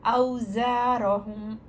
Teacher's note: زئی میں buzzing sound ہوتا ہے